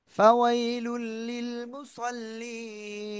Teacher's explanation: তানবিনের পরে ইদগামে বেলা গুন্নার অক্ষর লাম আসছে এজন্য কি করব গুন্না ছাড়া মিলিয়ে পড়ব